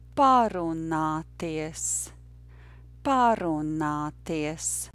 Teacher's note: The stress, of course, is on the first syllable.